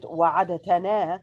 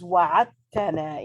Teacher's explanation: So we don't read it wa'adatana, but we read it as wa'atana. In other words, we assimilate between the letter da and the letter ta. Wa'atana, in taking out the letter da and simply stressing on the letter ta.